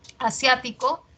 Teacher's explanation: Asiático es esdrújula, sia tiene la mayor fuerza de voz, es esdrújula